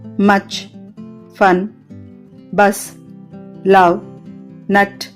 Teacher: లో ఆరవది [సంగీతం] అనదు ధ్వని వోకల్ ట్రాక్ట్ యొక్క వెనుక భాగంలో వ్యక్తీకరించబడుతుంది నాలుక సగం తెరచి ఉండి పెదవులు గుండ్రంగా లేని స్థితి ఉంటుంది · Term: షార్ట్ వోవెల్స్